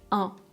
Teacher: les lèvres ne bougent pas, la mâchoire non plus et la seule différence c'est l'air qui passe aussi par le nez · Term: voyelle nasale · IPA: [ɛ̃]